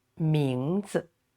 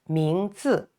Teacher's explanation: this 字 no tone, so it's not stressed